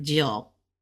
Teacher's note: this is a dip, so it's a third tone